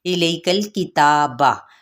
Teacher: تا پہ کھڑا زبر ہے جس کو 1 الف کے برابر ہی کھینچیں گے، باقی حرکت کو لمبا نہیں کریں گے